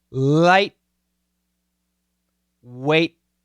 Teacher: a stop t there are two ways you can do it you can do a frontal stop where your tongue touches the alveolar ridge so light weight okay you can actually see my tongue go